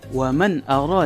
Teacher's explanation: cara membacanya yaitu jelas tanpa mendengung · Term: izhar